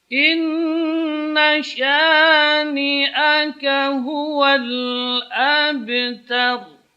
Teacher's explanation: Ta tipis dan ro-nya tebal.